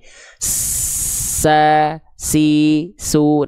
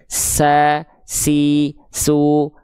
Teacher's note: Huruf sin dia punya sifat saofir, maka pastikan jelaskan sofirnya, jelaskan desisannya. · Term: berdesis